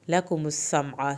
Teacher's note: انشأکم وجعل لکم السمع، وجعل لکم السمع، یہاں پر عین اور لام کی زبروں کو لمبا نہیں کرنا. لکم السمع، سین کو سیٹی کی آواز کے ساتھ پڑھنا ہے، عین کو حلق سے پڑھنا ہے